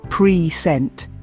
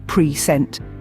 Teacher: When we stress the first syllable, pre-sent, it becomes a noun, as in a gift. But when we stress the second syllable, pre-sent, it turns into a verb meaning to introduce or show something.